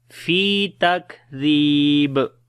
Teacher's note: On the kaf we make shiddat and hams quality, like takdhib. Zal we read in soft sound, and also we long due to ya madda, and on the ba we make qalqala.